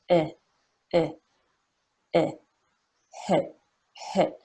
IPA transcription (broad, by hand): ɪ